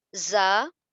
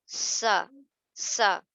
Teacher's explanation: تو زا میں بزنگ ساؤنڈ ہے اور سین میں وسلنگ ساؤنڈ ہے، یعنی کہ سیٹی کی آواز ہے